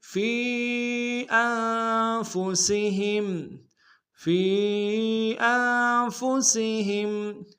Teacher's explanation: ثم لا یجدوا فی انفسہم، فی انفسہم، فی میں فا کو یا کے سامنے لائیں گے، یا مدہ، اور یا مدہ کے اوپر مد منفصل ہے، کم سے کم دو الف دال بھی کھینچیں گے